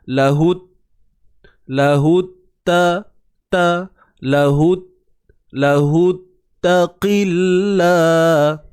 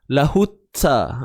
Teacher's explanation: Huruf ta yang bersabdu, tak perlu kita wujudkan hams tu. Sifat hams tu ada semula jadi dalam tu, cuma ianya tidaklah dalam keadaan yang kuat, bunyi yang sampai yalah lahutta. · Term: syiddah